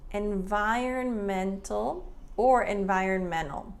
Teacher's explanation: we have environmental, but Americans often don't pronounce that T there.